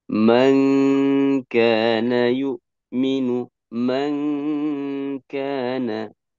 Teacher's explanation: makhrajnya nun berpindah kepada makhrajnya kaf